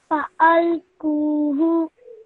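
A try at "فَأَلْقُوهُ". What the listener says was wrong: Well done. Much better, okay? Excellent.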